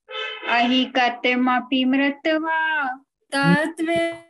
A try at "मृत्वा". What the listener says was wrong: एक मिनट रुकिए रुकिए, मृत्वा नहीं, मृत्वा यानी आधा ता हुआ,